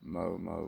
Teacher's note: Like the E's on me and the O's in mo. And the A's in ma. And the U's in mu. Are drawn out very long as a single sound and not as so many short ones.